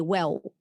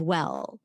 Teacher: used and it wasn't what they expected to hear for example let's say the L at the end of the word and um maybe you turn it into a w sound